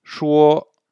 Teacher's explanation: Remarquez que le ton est sur le O, parce que le O est la voyelle longue, la voyelle importante de la syllabe, et le U est là juste pour faire ce qu'on appelle une médiane.